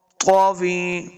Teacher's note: تو حروف مستعلیہ سے ہیں، ہم نے اس کو موٹا پڑھنا ہے